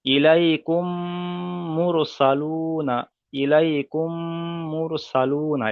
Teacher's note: মিম সাকিনের পরে যদি মিম আসে তাহলে মিমকে মিমের সাথে মিলিয়ে একালিপ পরিমাণ গুণনা করে পড়তে হবে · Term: ইদগামে সাফাবি